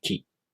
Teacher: For example, in this column, the K consonant for ka, ku, ke, ko are pronounced the same, but since ki is followed by the I vowel, the tongue position for ki changes. You move your tongue a little forward for ki.